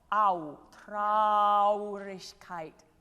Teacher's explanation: I could use a little more diphthong on traurigkeit. There's two vowels.